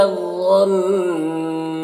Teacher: نون مشدد غنہ کے ساتھ پڑھیں گے